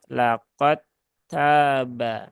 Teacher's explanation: idghamnya adalah idgham kamil, maka huruf dalnya anggap saja tidak ada